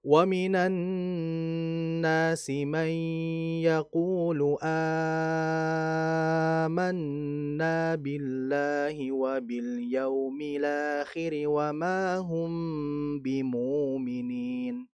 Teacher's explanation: warsy annafi itu membaca mad badal hamzah itu dengan bacaan yang lebih panjang 4 sampai 5 harakat